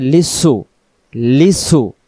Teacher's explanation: সিন অক্ষরটা জিহ্বার সামনে নিচের দাঁতের আগা থেকে শীষ উচ্চারণ হবে এমন আওয়াজ আসবে